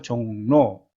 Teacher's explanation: 종의 받침이 비음이죠. 그래서 로가 노로 바뀝니다.